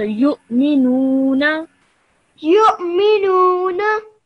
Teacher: Over here, you join the ya to the hamza over here, yes? Because the waw is not pronounced, the hamza is pronounced